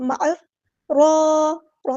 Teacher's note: الف کے برابر ہم لمبا کریں گے، مد اصلی ہوگی، اور را پر شد ہے تو اس کو دو بار ادا کریں گے، ایک بار ساکن کر کے، ایک بار اس کی حرکت کے مطابق